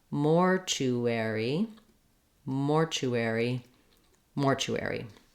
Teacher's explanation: we're going to stretch on more and go more quickly on the other syllables